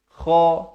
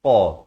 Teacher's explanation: Kha di hujung kerongkong, qaf ini pula di pangkal lidah.